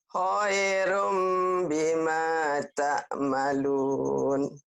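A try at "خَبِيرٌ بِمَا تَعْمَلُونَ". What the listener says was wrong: Bukan khairum. Khobirum. Khobir. Khobi. Khobi. Binya panjang. Khobirum. Khobirum bima ta'malun.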